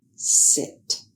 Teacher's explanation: To make the sound of the letter s, the air is blocked by the tongue near the ridge. Air passes with relatively high pressure through a narrow groove on top of the tongue. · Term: hissing s sound